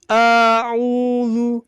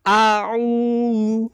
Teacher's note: Nah, jadi benar-benar terbuka ketika fathah.